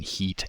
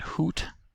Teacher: for the high vowels we have e in the front and oo in the back as in heat and hoot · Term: tongue advancement